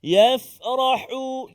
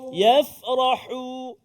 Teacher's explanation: ha pedas, hu, tengah rongga kerongkongan kita